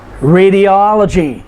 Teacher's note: radiology is five syllables but the third to the last syllable is the o-l oh and so we put the emphasis there